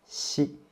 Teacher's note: Compared to qi, xi is more smooth, and you can feel there's no friction at all in your throat. So just let the tip of your tongue touch the lower teeth and let the air squeeze out.